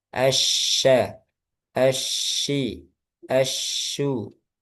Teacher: Tafashi itu hanya dimiliki shin, menyebar, ya, menyebar di sekitar makhraj, yaitu di tengah lidah.